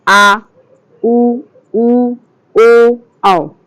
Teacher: फिर उसके बाद पश्च स्वर मतलब कि जिन स्वरों के उच्चारण में जीभ का पश्च भाग से काम करता है, जीभ पश्च भाग से काम करता है, पश्च स्वर कहलाते हैं। जैसे आ, उ, ओ, औ।